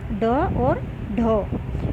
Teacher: जो ऊपर की तरफ हमारा दांतों के पीछे एक गड्ढा सा होता है, उसमें जाकर के जीभ टकराती है और एकदम नीचे आ जाती है, तो उस गड्ढे से को जो बहुत ही कठोर होता है उसको मूर्धा कहा जाता है। तो ड और ढ उत्क्षिप्त कहे जाते हैं, जो मूर्धा को टकराकर नीचे जीभ एकदम से गिरती है।